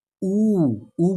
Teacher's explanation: जो हम उनको बोलने पर हमारे जो होठों में व्रत बन जाता है उन्हें व्रत मुखी स्वर कहते हैं · ऊ उ बोलेंगे आप तो आपका ऊठ जो है गोलाकार हो जाएगा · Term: वृत मुखी स्वर